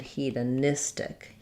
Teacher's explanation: still stays he, duh, but now we're stressing on nis and adding tic